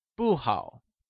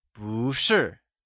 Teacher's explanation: 不 turns into boo. That is, it changes from fourth tone to second tone, when used alongside another falling tone or fourth tone. Thus we say 不好, but 不是.